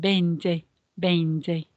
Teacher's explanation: not forgetting that the V sound is a b more of a b than a V